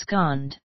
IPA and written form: əb'skɑnd (absconded)